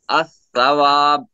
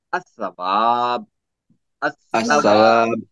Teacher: لام کو نہیں پڑھا، لام کو ہم نے پڑھا نہیں، بالکل بھی نہیں پڑھا، لام کو چھوڑ دیا ہم نے۔ اب دیکھیے، اب الثواب یہ از اکول ٹو جو ہے الثواب، یعنی حرکت جو ہے ال کے اوپر نہیں ہوئی، ملاتے وقت زبان کی نوک کو جلدی حرکت دینی پڑتی ہے۔